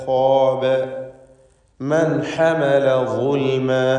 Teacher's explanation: മൻ എന്നതിൽ സാക്കിനത്തായ നൂനിനെ ഇൽഹാർ ഹൽക്കി നൽകി മണിക്കാതെ വെളിവാക്കി ഉച്ചരിക്കേണ്ടതാണ്